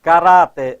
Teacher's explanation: Ó, caráter, a sílaba tônica está aqui, no Rá